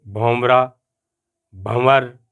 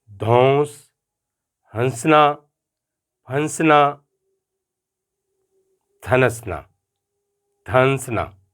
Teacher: ایسے الفاظ دیکھتے ہیں جن میں نون غنہ ہے، پورا نون نہیں ہے، یعنی نون کا اعلان نہیں ہے